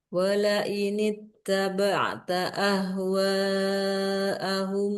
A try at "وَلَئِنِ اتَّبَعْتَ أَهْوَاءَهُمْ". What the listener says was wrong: Ahwa 4 harokat. Ulang.